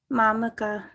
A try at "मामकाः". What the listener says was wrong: Mamakaha. Yeah, there's a H with a dot, so aha, right? Ang aha, like that. Mamakaha.